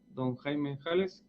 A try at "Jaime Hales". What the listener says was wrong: Jaime Ales, sí. No me pronuncie el H.